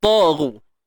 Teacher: Ta tebal. Okey, ta ni tebal. Ru pun sama. Tebal juga. Naik pangkal lidah kita.